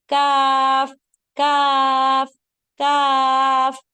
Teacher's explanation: यह बारीक आवाज में आदा होगा लेकिन काफ काफ काफ लेकिन जब आप लेटर काफ कह रहे हैं तो आपको जुबान की जड़ की तरफ कोई खिंचाव महसूस नहीं होगा